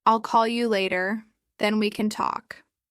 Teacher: Did you feel the vibration at the beginning of then?